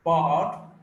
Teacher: this r is not pronounced here, bard, but the length. This takes the space. The time is taken up by the vowel sound.